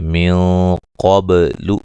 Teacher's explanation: नून साकिन का मोटा इख्फा है, क़ाफ को मोटा अदा करेंगे, बा पे कलकला करेंगे।